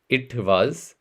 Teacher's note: Now, if I wanted to say this in the Indian accent, it would be it was. So notice that the W turns to V.